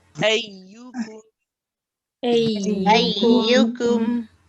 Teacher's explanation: It's not the same place as qaf, it's a bit more forward. It's in front of the qaf if you're coming closer to the teeth. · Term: kaf